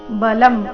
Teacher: ಅನುಸ್ವಾರದ ಉಚ್ಚಾರಣೆ ಇಲ್ಲಿ ಅನುನಾಸಿಕ ಮ ರೀತಿ ಯಾಕಂದ್ರೆ ಮುಂದಿನ ಶಬ್ದ ಬ ದಿಂದ ಪ್ರಾರಂಭ ಆಗ್ತಾ ಇದೆ ಪ ಬ ಭ ಈ ವರ್ಗದ ಅನುನಾಸಿಕ ಮ ಇದ್ದ ಕಾರಣ ಬಲಂ ಅಂತ